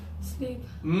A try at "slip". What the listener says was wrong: Better, but open more.